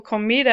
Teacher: when you pronounce it you naturally pronounce the next to the last syllable as the stressed part of the word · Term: naturally occurring stress